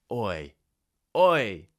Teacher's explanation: We start with the tongue back and rounded lips and move into that smiley shape at the end.